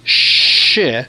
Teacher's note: The CH takes an SH sound.